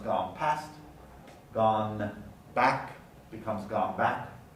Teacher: the alveolar nasal becomes labial or velar to match the place of articulation of the following consonant